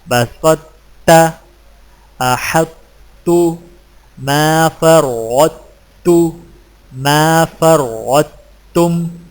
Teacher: ان 4 الفاظ کے پڑھنے کا طریقہ یہ ہے کہ طا کے موٹا پن کو ظاہر کرنے کے فوراً بعد تا باریک ادا کریں